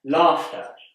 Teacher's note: you might expect there to be an r in laughter but there isn't